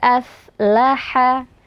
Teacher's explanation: Ha yang keluar dari tengah tenggorokan